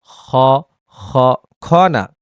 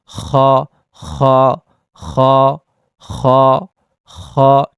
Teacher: হলকের শেষ হতে উচ্চারিত হয় গাইন খাইন খ